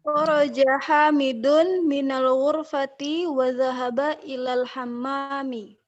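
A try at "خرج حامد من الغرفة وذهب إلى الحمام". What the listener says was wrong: Bagus, makin proper membacanya.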